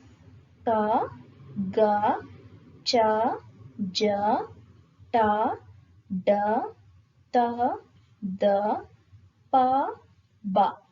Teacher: ಅಲ್ಪ ಅಂದ್ರೆ ಕಡಿಮೆ, ಪ್ರಾಣ ಅಂದ್ರೆ ಉಸಿರು. ಕಡಿಮೆ ಉಸಿರಿನಿಂದ ಉಚ್ಚಾರ ಮಾಡುವಂತಹ ಅಕ್ಷರಗಳನ್ನ ಅಲ್ಪ ಪ್ರಾಣಾಕ್ಷರಗಳು ಅಂತ ಹೇಳಿ ಕರಿತೀವಿ